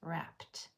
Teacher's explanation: the t sound is voiceless